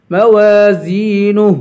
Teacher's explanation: ہے، اسے ایک الف کے برابر کھینچ کے پڑھیں گے، زین، زا کو بھی یا سے ملائیں گے اور یا حروف مدہ ہے، اسے ایک الف کے برابر کھینچ کے پڑھیں گے